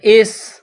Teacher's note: सीन में सीटी की आवाज पैदा करनी है सीन को पतला करना है हमजा सीन जर इस र के ऊपर जबर है तो र · سین میں سیٹی کی آواز پیدا کرنی ہے، سین کو پتلا کرنا ہے